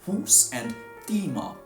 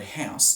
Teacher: a long, high monophthong u or e has turned into a very wide, rising diphthong ow or I